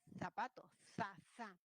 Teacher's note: alguien en lugar de decir zapato, zapato con S, dirá zapato, za, ¿no? Con la interdental. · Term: El ceseo